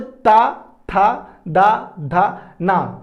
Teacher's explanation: तो जो वायु का इंपैक्ट पड़ रहा है वो किस पे पड़ रहा है? हमारे दांतों पे पड़ रहा है।